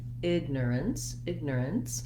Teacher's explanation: in the ipa here i didn't even write any vowel sound we almost use no vowel there between my r and my n and s sounds the letter c e say the sound s in this word · so i want to be able to do my er sound my length is on my first syllable so in this case egg is longer egg and then i add miner ignorance ignorance and you can